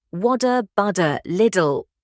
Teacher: the Canadian T that sounds like a soft D